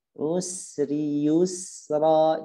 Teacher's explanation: jadi dialirkan sa-nya, mengalir napas dan juga mengalirnya suara. Baik, di ayat ke-5 dan ayat ke-4.